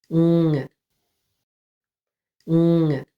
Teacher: It's one clean nasal sound from the back of your mouth.